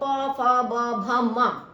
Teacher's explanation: last हमारा पवर्ग, पवर्ग में आप देखिए प फ ब भ म, होठ, होठों का प्रयोग हो रहा है इसलिए वो ओष्ठ्य कहलाते हैं